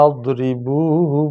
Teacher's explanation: ضاد ادا کرتے ہوئے زبان داڑھوں سے لگائی جاتی ہے، تب یہ صحیح ادا ہوتا ہے